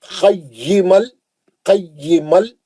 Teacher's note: नून का अब क्या हो गया? बगैर गुन्ने के हम लाम में चले गए। इदगाम बिला गुन्ना, तन्वीन का इदगाम बिला गुन्ना हर्फ लाम।